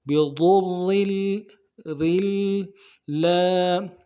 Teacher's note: بضر، ضاد کو موٹا کریں گے اور ضاد کے پیش کو را کے ساتھ ملائیں گے. بضر، بضر، اور را کو بھی آگے لام کے ساتھ ملائیں گے، تشدید ہے